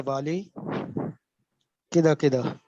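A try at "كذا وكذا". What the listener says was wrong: या फिर कैता व कैता, जो भी बोल दें। कदा व कदा, ये कदा व कदा कोई किदा किदा कर रहे हो। चले, असल लफ्ज कदा है तो उसको किदा कर दे।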